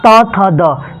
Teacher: त का उच्चारण स्थान कहां है दांत से है तो उसी वजह से इसको हम बोलते हैं दंत व्यंजन बोलते